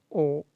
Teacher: ओ बोलिए तो गले से आवाज निकलेगा, गले से, और आपका ओठ गोल हो जाएगा। ओठ जो है गोल हो जाएगा इस प्रकार से, ओ बोलिए, ओठ जो है गोल शेप ले लेगा। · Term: कंठ ओष्ठ